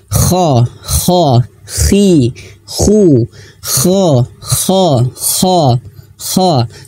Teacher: ketebalan tersebut bukan karena mengerutkan bibir, tetapi karena pangkal lidah terangkat. · Nah, untuk huruf kha, ya untuk huruf tebal, saya garis bawahi, huruf tebal itu tidak boleh manyun ya ketika fathah. Jadi tebalnya itu bukan karena manyun, tapi pangkal lidah naik. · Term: Isti'la